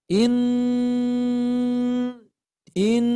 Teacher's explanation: pada tingkatan gunah Akmal gunah yang paling sempurna maka cara bacanya didengungkan sepanjang empat ketukan kemudian disempurnakan suaranya dari hidung semua